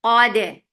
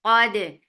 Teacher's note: Qalqala and dal will be light.